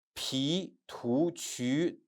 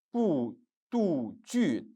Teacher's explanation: they are pronounced aspirated consonant, while bu, du, ju, they pronounced unaspirated